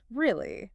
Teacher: So if you tell me something completely shocking and I respond like this, really, my voice goes way, way up at the end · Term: high-rising tone